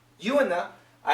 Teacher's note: in a so here we got the ooh and the I when we connect the oo sound to another vowel we get a w